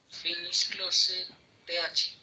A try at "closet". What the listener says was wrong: Yeah, okay, but no TH. What's the pronunciation for that in English? No TH, but? TH, but it's not TH, it's T. Okay, that is the only problem?